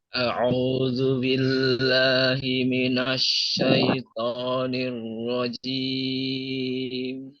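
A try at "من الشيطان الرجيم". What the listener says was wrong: Coba shin-nya dijelaskan lagi Pak. Minasyaitoni. Huruf jimnya masih yang terakhir tadi masih terdengar ada cek-ceknya ya Pak. Mungkin apa namanya tinggal di ini aja, dikonsistenkan saja.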